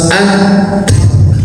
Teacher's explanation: ta ini ya punya sifat syidah, terhenti suaranya